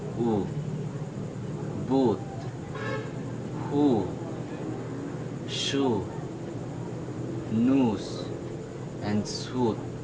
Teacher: the back of the tongue is raised High when the tongue tip is directly behind the lower front teeth as you focus on my lips it is protruding quite rounded